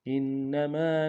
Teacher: انما میں حمزہ کو نون کے ساتھ ملانا ہے، نون کے اوپر تشدید زور دیں گے اور میم کے ساتھ الف مدہ ایک انداز میں کھینچیں گے.